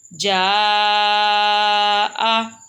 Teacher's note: جیم زبر الف مد جا، حمزہ زبر آ، جا آ۔ جیسے کہ خالی الف کے اوپر مدہ ہے اور یہ دونوں لمبے ہوتے ہیں، ان کو لمبا کرنا ہے، حمزہ کو لمبا نہیں کرنا۔